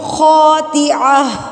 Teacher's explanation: گول تا، یہ وقف کی حالت میں ہاں میں تبدیل ہو جاتی ہے